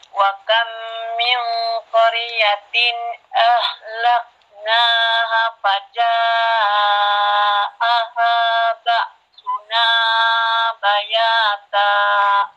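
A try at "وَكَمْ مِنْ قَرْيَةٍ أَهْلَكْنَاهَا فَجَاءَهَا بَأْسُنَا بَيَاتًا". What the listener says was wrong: Tambah lagi, hunahnya tambah lagi ini. Wa kam ditahan dulu di situ. Kurang sedikit lagi, sempurnakan.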